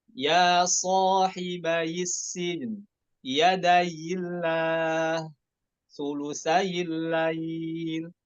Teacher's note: Bukan ada tasydid ya, ya-nya takhfif, bukan tasydid.